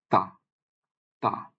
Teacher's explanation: জিহ্বাটা উপরের পাটির সামনের যে দুইটা দাঁত ওর গোড়ায় বাড়ি খাবে